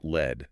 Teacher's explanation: the English L sound requires the tip of the tongue to touch the alveolar ridge, that little bump just behind the upper teeth.